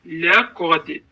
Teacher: Baxın, qaf hərfi qalın, dəl hərfi incə və sonra qalqələ adlanır.